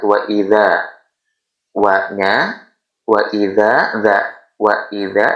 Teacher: Fathah diikuti alif mati adalah hukum madodi'i. Cara bacanya ialah dipanjangkan satu alif atau satu ayunan atau dua harakat